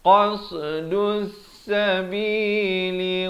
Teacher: Qasdus sabi dal bari dhammah naik terus di atas sin yang bertanda syaddah ini. Di sini alif lam syamsiah, lamnya tidak dibunyikan